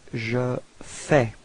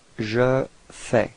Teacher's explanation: so final S is not pronounced